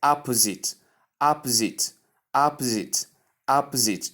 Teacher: We have the short O sound, ah, the P sound, the schwa sound, the Z sound, the short E sound, and the T sound. When you combine them, you get opposite, opposite, opposite, opposite.